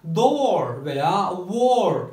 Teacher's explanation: Ters C ile gösterilen bu sesimiz O sesiyle başlayıp yine O sesiyle bitiyor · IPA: /ɔ/